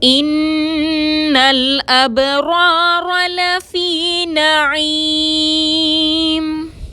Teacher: لفی میں یا ساکن سے پہلے فا کے نیچے زیر ہے، یا مدہ ہے، 2 حرکت کے برابر کھینچ کر پڑھیں گے. نعیم میں عین کو حلق سے ادا کریں گے، میم کو ساکن کر کے وقف کریں گے · نون مشدد پر غنہ کریں گے، لام ساکن کو بغیر جھٹکے کے ادا کریں گے